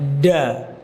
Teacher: Huruf dal makhrajnya yaitu punggung lidah dengan pangkal gigi seri atas masih sama. Kesalahannya yaitu membaca huruf dal ujung lidah ditempelkan di langit-langit, bukan di gigi